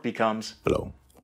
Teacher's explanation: At least in some varieties of AAVE, when R appears after O or U, the R disappears and the word ends in an O sound